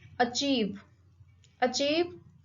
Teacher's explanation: this word has two syllable, achieve, and the stress is on the second syllable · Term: disyllabic words